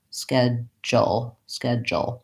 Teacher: in this pronunciation I have just a dark L but there's a little bit of a schwa